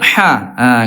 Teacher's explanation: huruf ain ya, huruf ha. Bunda sama-sama keluarnya di tengah tenggorokan. Huruf ha, Bunda suaranya dia kosong ya, ha.